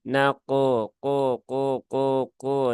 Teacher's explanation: ketika mengucapkan huruf q pastikan pangkal lidahnya naik dan Memang secara default Q itu pangkal lidahnya sudah naik ya